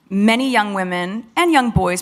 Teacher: there's vowel stress in the conjunction and rather than the noun